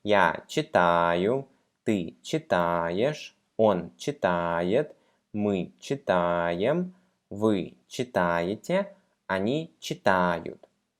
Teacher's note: we keep the letter A stressed in all the conjugated forms